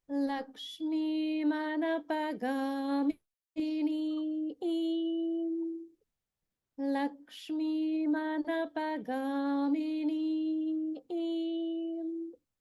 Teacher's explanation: So we have Lakshmi Manapagamini, and there is a dirgha svarita noted on the final syllable. So the way that we would pronounce this neem at the end would be Ni im Ni im.